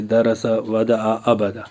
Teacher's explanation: ज़बर को जल्दी पढ़ें, थोड़ा भी न खींचे। ज़बर की आवाज़ ऊपर को उठती है, जैसे दरसा, वदा, अबदा।